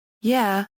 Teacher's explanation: ends with the short vowel [ɛ], or in some dialects [æ], neither of which are found at the end of any regular English words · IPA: [jɛ]